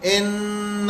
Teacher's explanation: اگر کوئی یوں پڑھ دے ان تو یہ اس میں الف مدہ بنا دیا, وہ نہیں بنانا ہے, معنی بدل جاتے ہیں, معنی ہی بدل جاتے ہیں.